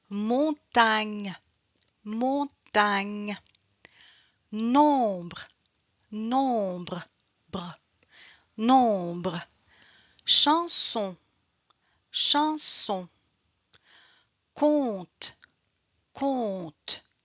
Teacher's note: la langue est en arrière, faire passer l'air par le nez et par la bouche. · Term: le son on